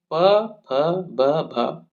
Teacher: प फ ब भ ओष्ठ्य वर्ण है, बिल्कुल सही। इनका उच्चारण होठों से होता है।